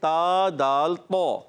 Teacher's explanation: تا کا مخرج ہے زبان کا سرا اوپر کے دانتوں کی جڑوں سے. اوپر کے دانتوں کی جڑوں سے تا، جب زبان کا سرا لگتا ہے تو ادا ہوتے ہیں تا دال تو. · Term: حروف نطعیہ